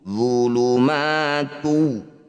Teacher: dumah tanwin bertemu wau disebut bacaan Idam bunah Idam artinya masuk Bunyi dumah tanwinnya langsung masukkan pada wau jadi langsung mencucu